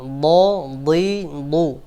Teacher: দদকে দদের মাখরাজ জিহ্বার গোড়ার কিনারা থেকে উচ্চারণ করতে হবে